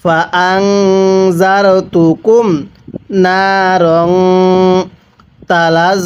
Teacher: নুন সাকিনের পরে জাল আসলে নুন সাকিনটা গুনাহ করে পড়তে হবে। জাল র জবর জার, তাহলে ফা আং জার, তা পেশ তু, কাপ মিম পেশ কুম, তু কুম, তাহলে ফা আং জার তু কুম। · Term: গুনাহ করে পড়ব